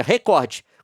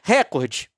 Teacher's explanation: pronunciar a palavra recorde como paroxítona, ou seja, recorde, com força na sílaba cor